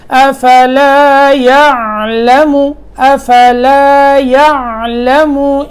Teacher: یہاں حمزہ کی آواز نہ پیدا ہو، یہ عین ہے، عین کو صاف کر کے پڑھنا ہے